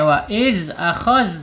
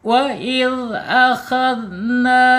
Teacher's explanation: Makhrajnya jelas ya, di ujung lidah menyentuh ujung gigi seri ya, keluarkan sedikit ujungnya. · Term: zal